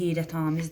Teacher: amiz şəklində a saytı uzanır.